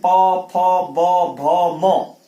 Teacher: प आपके होंठ आपस में चिपक जाएंगे, प फ ब भ म, ये ओष्ठ वर्ण है, ओष्ठ वर्ण है, ओष्ठ है, होंठ आपस में मिल जाते हैं, इनका उच्चारण स्थान ओष्ठ है।